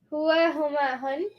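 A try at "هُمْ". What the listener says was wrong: No N's. Only M's. Hua, huma, hum. Hum.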